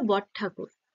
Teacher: র আর ঠ মিলে একটা আলাদা ধ্বনি সৃষ্টি হয়েছে ত এখানে একই রকম ধ্বনিতে রূপান্তর না হয়ে একটা নতুন রকমের · এখানে রও আসেনি ঠ আসেনি বট ঠাকুর একটা ত যুক্ত হয়েছে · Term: আংশিক সমীভবন